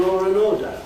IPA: ˈlɔːr ən ˋɔːdə